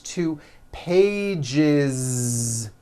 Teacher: Okay, so let's look at the word page, for example, which ends in a voiced sound. One page becomes two pages with that voiced Z. Two pages. It's not two pages, unvoiced, no.